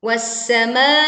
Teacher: Leburkan alif lam ke huruf sin sehingga alif lam tidak terbaca dan kita langsung masuk ke huruf sin dan ditekan. Was-sama'. Ada bunyi serui tajam tipis muncul saat kita membaca huruf sin bertasydid.